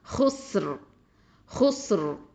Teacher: ராவை வந்து தஃப்ஹீமா வல்லினமாக தான் உச்சரிக்கணும்.